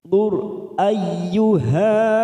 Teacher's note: ro sukun kita baca tafkim karena sebelumnya dum